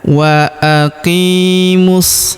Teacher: Huruf qi kita panjangkan dua harakat karena terdapat ya sukun di depannya.